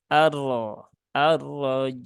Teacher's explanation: ketika dia berharakat fathah dikata arrajim itu rnya terbaca tebal nah dia dibaca dengan tebal Jadi bukan dibaca dengan arro arrojim